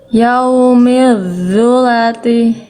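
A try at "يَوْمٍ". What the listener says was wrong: Oke, ngalir suaranya udah bagus ya. Tapi yang ini masih kayak zal. Yang ini jadi huruf tebalnya belum kerasa tebal vo-nya. Kalau dia vo ini gak tebal, nanti kesalahan berikutnya adalah kesalahan poin 1. Tertukar dengan huruf zal.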